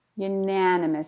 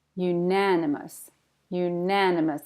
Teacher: Stress on the na